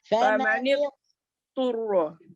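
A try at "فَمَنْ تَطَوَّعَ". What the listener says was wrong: Kurang. Famanit turra. Jangan diidghamkan secara sempurna ke dalam huruf to, itu masih diidghamkan secara sempurna.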